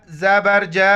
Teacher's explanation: جیم کے بعد مد ہے، اس مد کو جو ہے نا 4 الف کی مقدار کھینچنا ہے